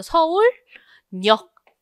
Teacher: 리을 받침 뒤에 니은 첨가가 일어났을 때는 이 니은이 리을로 바뀌어서 발음되는 유음화가 일어난다라는 거지.